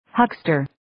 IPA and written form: 'həkstər (Huckster)